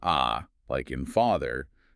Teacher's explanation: the tongue is lower and flatter, which makes a bigger resonant space